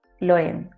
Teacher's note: le nasal ne modifie jamais les voyelles, ça va garder le son E